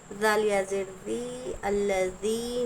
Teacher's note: جب ذی کہیں گے تو زبان کی نوک دونوں دانتوں کے درمیان رکھیں گے، اور یا سیکنڈ سے پہلے زیر یا مدہ ہوگا، یا مدہ کو ہم ایک الف کے برابر کھینچ کر پڑھیں گے۔